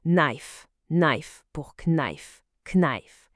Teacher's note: La toute première lettre est muet. Le K ne se prononce pas du tout. On dit juste knife, knife pour knife, knife.